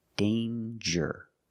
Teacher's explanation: Danger. There's no nasal sound. There's no m. It's a regular n. Danger with the J sound like jump and juice.